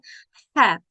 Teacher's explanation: ہا کی ادائیگی جو ہے وہ ہم حلق کے درمیان والے حصے سے ہوتی ہے، اور درمیان والے حصے سے ادا کرنے کے لیے ووکل کارڈ سے ہوا کا اخراج اگر رکھا جائے تو ہا کی ادائیگی ہوتی ہے، رگڑ والی ایک آواز ہوتی ہے، ہا گلے میں محسوس ہوتی ہے